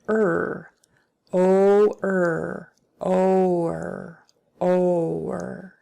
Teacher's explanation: we kind of hold out our R sounds a little longer than you might be used to. You might be tempted to say something like but it's a little longer than that. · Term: vocalic R